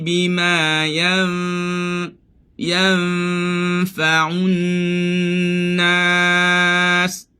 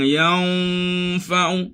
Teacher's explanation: Dengung nun nak masuk fa, dengungnya nipis kerana fa huruf nipis. Fa adalah huruf nipis.